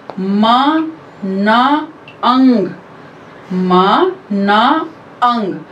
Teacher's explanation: Soft palate हमारा नीचे की तरफ होता है, लोअर्ड होता है, इसीलिए नेजल पैसेज जो है हवा का वो ओपन होता है। मीन्स इनमें जो साउंड्स होती हैं वो हमारे नाक की साउंड से, वहां से आती हुई हवा की जैसे होती हैं, इसीलिए इन साउंड्स में ऐसा लगता है जैसे हम नाक से बोल रहे हैं। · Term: नेजल साउंड्स